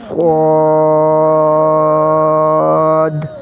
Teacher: موٹا کر کے 5 الف کھینچنا ہے اس کو